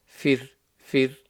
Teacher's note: Fir, the ra is going to be empty mouth because the ra is sakin, but you look at the letter before. The letter before is a fa with a kasra, so the ra becomes empty mouth. Fir, fir. Try to make it flat.